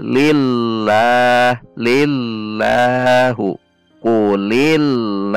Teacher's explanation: Ketika dibaca tipis, berarti tidak perlu mengangkat pangkal lidah dan sebagian sekeliling lidah, tidak isti'la, sehingga berbunyi li masuk ke lam, lil, tidak ada menaikkan pangkal lidah sehingga terdengar tipis terus, lillah, lillahu, kulillahu.